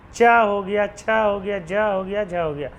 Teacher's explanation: च वर्ग के जितने भी वर्ण है वे सारे के सारे ही स्पर्श संघर्षी में आते हैं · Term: स्पर्श संघर्षी व्यंजन